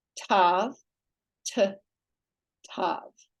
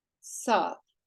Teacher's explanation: Tav with the dageysh is a hard T, as in Thomas. Without the dageysh, it's a soft S, pronounced as sav.